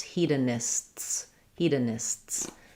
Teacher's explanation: So hedonist, you can hear I have the S and T. When I have words that end with STS, hedonists, I basically have the S sound and then a sharp S where that T turns into an S.